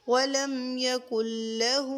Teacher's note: ایک الف کی مقدار پر ہا کو کھینچیں گے